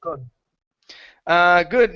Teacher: in the word could, yes, that L is silent